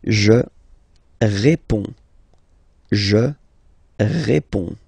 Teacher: you can see that D and S here are not pronounced